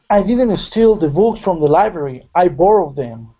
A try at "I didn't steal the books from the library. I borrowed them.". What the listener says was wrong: It sounded like you were stressing library a bit, and steal didn't get really lifted. So I didn't steal the books. I didn't steal. I didn't steal the books. And notice sometimes if you stress one word, you drop and let the listener catch that word. That is the word you're saying, steal. I didn't steal the books from the library. So you're saying I didn't steal.